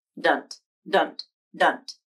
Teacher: You can pronounce this as student, pronouncing the final syllable as dunt, with a released D, a schwa vowel, and a true T at the end.